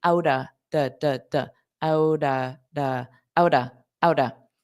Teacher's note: the pronunciation of those T's is a soft D